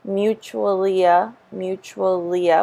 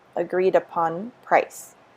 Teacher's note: we have the y intrusion because it's vowel to vowel